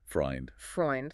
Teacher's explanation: In German, EU makes the sound oi, like boy or toy.